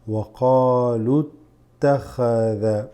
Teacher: Here we have a Hamzat al-Wasl that's going to drop. So we're going to go straight into the ta from back here.